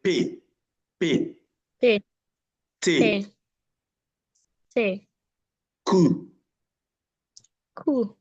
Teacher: When you pronounce these phonemes, there is a total blockage of air initially in your mouth, and then it comes out at once. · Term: occlusive